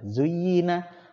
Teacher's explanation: Zuyyina, nah, kalau za zuyyina sama ya, jelas bedanya karena mereka itu yang satu lidahnya tergigit, sedangkan zuyyina za ini lidahnya nggak tergigit. Yang nempel itu gigi atas dan gigi bawah.